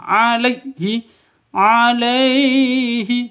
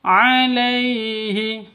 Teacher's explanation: sifat Lin lentur lemas tidak boleh disentak tidak boleh dipanjangkan